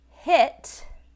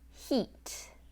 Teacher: And in this situation, it was the short I and the long E. So instead of the short I, I was hearing E